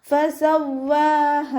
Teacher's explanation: അവസാനത്തിൽ ഹഇൻ്റെ കൂടെ അലിഫ് മദ് വന്നു, 2 കൗണ്ട് നീട്ടി നിർത്തി കൊടുക്കുക